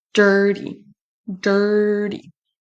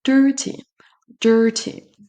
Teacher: Donc moi, je le prononce à l'américaine avec un D, mais on peut dire aussi dirty, dirty.